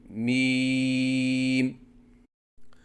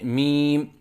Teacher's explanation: میم کی ادائیگی کے وقت دونوں ہونٹوں کی خشکی والے حصے کو ملائیں اور اس کے بعد ہونٹوں کو الگ کریں اور 3 الف کے برابر لمبا کر کے پڑھیں